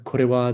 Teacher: the R in kore is very brief, somewhere around here, I think.